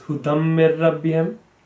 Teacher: So when we have this tanween followed by a tashdid, what will happen is that because it's a dal and we have a meme, the dal sound will be there, the meme sound will be there, but the noon will not be there. So instead of hudan, it will be hudam. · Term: idgham